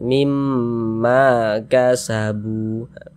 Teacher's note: Jadi kalau ada alif sebelumnya ada harokat fathah, maka huruf yang memiliki harokat fathahnya dibaca panjang, sehingganya ma dibaca panjang. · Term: Mad tabi'i